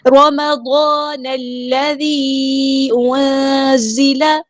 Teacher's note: الف مد آیا ہے، 2 کاؤنٹ لمبا کریں گے۔ نون کو ہم نے لام کے ساتھ ملا دینا ہے، حمزۃ الوصل ہمارا ڈراپ ہو جائے گا۔ دال باریک لائٹ لیٹر ہے، یہاں پہ ہمیں مد دکھ رہی ہے، ڈسکنیکٹڈ مد ہے، مد منفصل۔